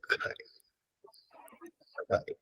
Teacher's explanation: So no, this sound, this cry, ka, is not aspirated. The simple reason is the following sound is ra. And in association with ra, it becomes non-aspirated.